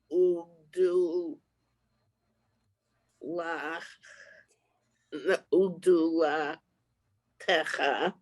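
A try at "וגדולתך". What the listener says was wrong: No, you added a vowel that's not there. Udulatcha. Tcha. So you got the vav is the u, the gimel, the dalet is the do, the lamed is la. So ugdulat, and then the taf just is a t sound, and then the final sound is a cha. So ugdulat cha.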